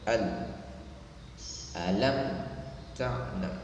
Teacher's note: ketika huruf lam ini disukunkan, jangan seperti didengungkan ya, al, langsung dibaca al, alam ta'lam, seperti itu.